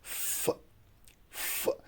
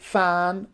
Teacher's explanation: So with the help of lower lip and upper teeth, this sound is produced, which is f. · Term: labiodental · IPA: /f/